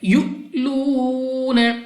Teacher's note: Next ہمارے پاس حمزہ ساکن ہے تو حمزہ ساکنہ کو ہر حالت میں جھٹکا دے کر پڑھا جاتا ہے. یؤلون واو ساکن سے پہلے پیش واو مدہ ہے 2 سیکنڈ تک کھینچ کر پڑھیں گے